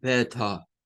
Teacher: no va a sonar la r al final la va a eliminar Y entonces nos va a decir Beto con el sonido de la t